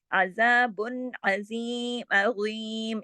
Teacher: अलिफ के साथ नहीं, अज़ाबुन अज़ीम, अज़ाबुन के अंदर भी इज़हार हो रहा है, इज़हार हल्की, क्योंकि आगे देखिए हरफ़े हल्की है ना आइन